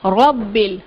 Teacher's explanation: کو کنڈیشن آ گئی، کیسے کہ را زبر کے ساتھ ہے، را جب زبر کے ساتھ ہو تو اس کو موٹا پڑھتے ہیں، اس کو باریک نہیں پڑھیں گے ، باریک پڑھنا یہاں مجہول ادائیگی ہوگی۔ رب اور با تشدید · یہاں مجہول ادائیگی ہوگی۔ رب اور با تشدید کے ساتھ ہے، با جب تشدید کے ساتھ ہو تو اس کو تھوڑا سا سختی کے ساتھ پڑھتے ہیں۔